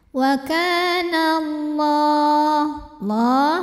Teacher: Kemudian hukum alif lamnya dinamakan dengan alif lam syamsiyah, karena ada alif lam yang menghadapi huruf syamsiyah, yaitu huruf lam. Cara bacanya alif lam ini tidak perlu dibaca ya. Jadi langsung masukkan ke huruf lam berikutnya, diidghamkan.